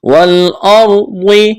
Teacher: یہاں را ساکن ہے، را ساکن سے پہلے زبر ہے، تو اس زبر کی وجہ سے را کو موٹا پڑھنا ہے